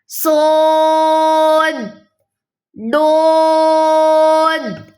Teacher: दोनों में इत्तबाक की सिफ्त है। बहुत पुर लेटर हैं, हरूफ मुस्तालिया में से हैं।